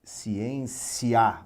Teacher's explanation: o som ele cresce de fato a pronúncia se intensifica ciência o a é mais forte que o i transitório o o é mais forte que o i então o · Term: ditongo crescente